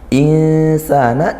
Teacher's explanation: Insana ikhfa haqiqi, nun sukun bertemu sin, maka kita baca samar dan dengung